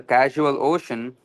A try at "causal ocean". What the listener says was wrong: It's causal ocean, not casual ocean.